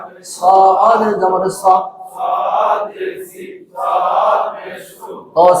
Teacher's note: সামনের নিচের দাঁতের আগা থেকে মোটা ভাবে আদায় হবে